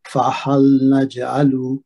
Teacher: यहाँ पे जीम का कलकला होगा, कलकला सुगरा